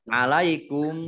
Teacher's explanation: Ayyunazzala, ya-nya dibaca double, ada tasdidnya. Alaikum, mim sukun bertemu dengan huruf mim, idgham mutamasilain atau idgham mimi, dibaca mendengung. Mimnya ada tasdidnya, ya, ditahan 2 harokat.